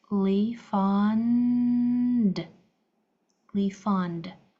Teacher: E D sounds like D when it comes after a voiced sound.